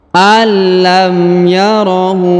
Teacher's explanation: huruf hu dibaca panjang lima harakat karena di atasnya terdapat tanda panjang bacaan lima harakat alam yarohu